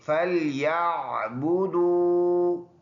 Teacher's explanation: فا نرم ادا ہوگا اور عین کو گلے سے، فَلْيَعْبُدُوا، یہ واو مدہ ہے، واو سے پہلے ورڈ پر پیش ہے، ایک الف کی مقدار لمبا ادا کرنا ہے، یہ الف سائلنٹ ہے۔